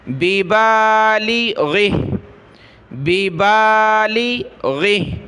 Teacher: بیبالی، غین زیر غی، بیبالغی، ہا کھڑی زیر ہی، بیبالغی ہی، جب رکیں گے وقف کریں گے تو ہا کو ہوا میں اڑا دیں گے، ساکن کر دیں گے